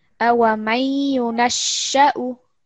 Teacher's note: Make the sheen a little bit shorter because it's just fatha.